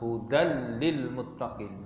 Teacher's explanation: Jadi hudal lil muttaqi tanwin bertemu dengan lam itu adalah idgham bila ghunnah. Yakni kita memasukkan tanwin ke dalam lam tanpa dengung. Dengan tak dengunglah hudal lil muttaqi.